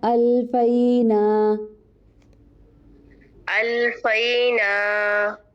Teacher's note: الفینا کے بعد الف مدہ ہے، ڈراپ ہو گیا ہے